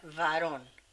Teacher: Varón con B corta, como decimos nosotros, con B labiodental.